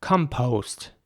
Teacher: In American English, it would be more like compost. The O at the end is very round.